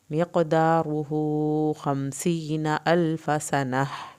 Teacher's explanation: यहाँ पर फ़ा की ज़बर को लंबा नहीं करेंगे। सनह के आखिर में हा अंदर से निकलेगा।